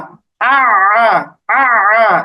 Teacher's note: আইনের উচ্চারণটা গলার মাঝখানে নিতে হবে